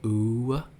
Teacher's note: a vowel that undergoes a little bit of change, like saying uu, and you've got that little off-glide at the end